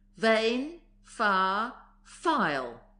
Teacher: bring the upper teeth against the middle of the lower lip, forcibly for V and doubly so for F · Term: tooth labials